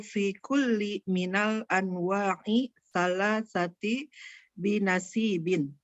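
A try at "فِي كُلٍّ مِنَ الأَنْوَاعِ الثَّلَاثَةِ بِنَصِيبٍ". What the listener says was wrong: Fi kullinya ditanwinkan aja.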